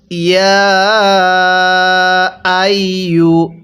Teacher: এরপরে ইয়া আইয়ু, শব্দটা ইয়া আইয়ু, এখানে ইয়ার মধ্যে আমরা 3 আলিফ টান দেব, কারণ ইয়াটা মদের হরফ, আর মদের হরফের উপর এরকম চিকন চিহ্ন থাকলে ওই শব্দটা আমাদের 3 আলিফ টেনে পড়তে হবে।